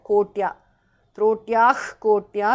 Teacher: Trotyaha visarga changes to jihva mulya